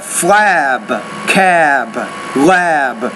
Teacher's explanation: You have flab, cab, lab. The vowel sounds are longer in these words because the B is a voiced consonant sound.